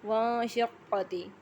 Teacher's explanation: نون ساکن کے بعد شین حروف حلفی میں سے ہے، یہاں نون کی آواز کو چھپا کے پڑھا جائے گا۔